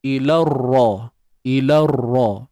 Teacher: So kita terus idgham, terus masuk pada ra bersabdu tu.